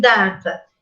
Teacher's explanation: Em data, tanto D quanto T são produzidos com uma obstrução total na região que vai dos dentes até os alvéolos.